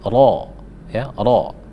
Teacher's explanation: Rabbi, ra tebal ya, ra itu ketika dia berharakat fathah atau di atas maka dia tafkhim.